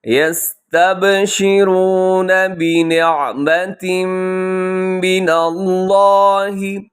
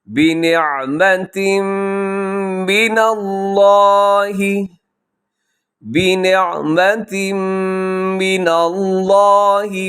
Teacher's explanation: بنعمة یہاں ادغام ہے غنے کے ساتھ